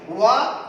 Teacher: व दांत और ओष्ठ दोनों से मिलकर बाहर आता है। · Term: दंत ओष्ठ